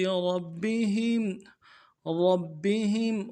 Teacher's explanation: را کو موٹا کریں گے، با کے ساتھ ملانا ہے، با کے اوپر تشدید ہے، زور دیں گے ، اور با کے نیچے زیر ہے، نرمی سے پڑھیں گے،